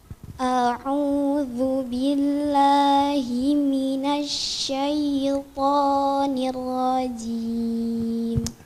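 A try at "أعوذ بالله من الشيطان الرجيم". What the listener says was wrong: Jangan baca ni rajim. Di sini ada dua ra bukan satu. Yang pertama sukun. Kita harus kasih hak ra yang sukun dulu. Nir. Barusan masuk ra fathah. Nir rajim. Gak boleh posisi mulut kita sama. Sukun beda dengan fathah. Nir ini sukun.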